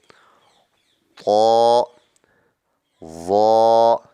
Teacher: ایک ہی مخرج ہے، ان کو نرمی سے ادا کریں گے۔ ظا کو پر کر کے پڑھیں گے کیونکہ وہ حروف مستعلیہ میں ہے